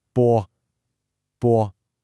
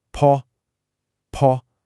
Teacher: The pinyin B is unaspirated. That means no puff of air. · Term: aspiration